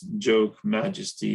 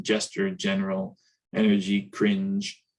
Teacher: Okay, finally, we got that same articulation, but now we have a d plus a j. That's a voiced post-alveolar affricate.